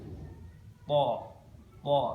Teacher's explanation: Huruf po ini tempat keluarnya adalah kepala ujung lidah. Jadi ujung lidah, tapi bagian kepalanya.